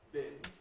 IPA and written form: bɪn (bin)